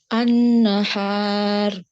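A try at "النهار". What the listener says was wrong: Nah, ra tebal, harf ra-nya tebal. An-nahar. Nah, jika datang harf ra, pangkal lidah naik ke atas, sama dengan kata yang satu lagi.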